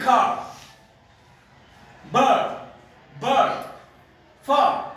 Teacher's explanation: R हम pronounce नहीं करते तो ये वन सिलेबल होता है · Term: R controlled syllable